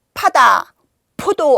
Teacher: 영어의 피하고 비슷하지만 더 강하게 바람을 팍 뿜는 소리입니다. 그래서 입안에 공기를 모았다가 입을 닫고 모았다가 한꺼번에 푸 하는 거예요. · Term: 피읍